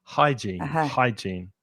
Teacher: be careful of that h sound as well especially if you're a Spanish speaker it's not from the throat it's not here it's just like you're cleaning your glasses hygiene hygiene >> hygiene and then we have the adjective which is uh hygiene is a noun and the adjective is hygienic hygienic.